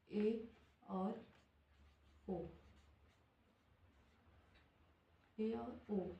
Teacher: ऐसा स्वर जिसका उच्चारण करने पर जिसका उच्चारण करने पर मुह आधा बंद रहता है उसे अर्ध समृत स्वर कहते हैं